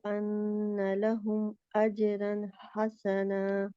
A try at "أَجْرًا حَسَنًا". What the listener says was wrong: اجرن حسنا، رن نہیں ہے کیونکہ نون کے مخرج میں رہنا ہے آخر میں، تنوین کا جو نون ہے نا اس کے مخرج میں رہنا ہے۔ اجرن ہے،